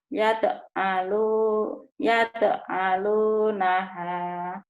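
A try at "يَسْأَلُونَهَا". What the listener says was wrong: Yas, bukan al, itu sad, as. Sad, as.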